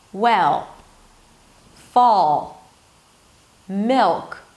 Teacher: So you hear the quality of the sound, right? It's really deep and dark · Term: dark L